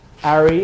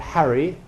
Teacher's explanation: People who drop off H's at the beginning of a word, they say Harry and not Harry. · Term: H dropping